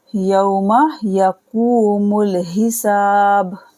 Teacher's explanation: واو ساکن سے پہلے زبر ہے تو واو لین ہوگا